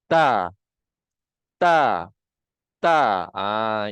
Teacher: hujung lidah ke antara gusi dan gigi atas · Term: huruf Ta